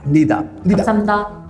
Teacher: But if you remember, the 히읗 is not H, it's just air